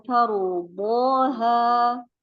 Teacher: Nanti yang ro bisa lebih ditebalkan